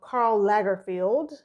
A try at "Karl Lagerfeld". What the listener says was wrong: I thought it was Lay, not La. I thought it was Lay.